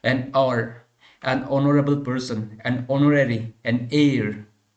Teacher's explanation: Here you see there are only 5 letters in vowels, but here H is not the part of vowel, but H is a consonant. Even though the word will be starting with the H, but H will be a silent and it will give the sound of vowel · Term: H is mute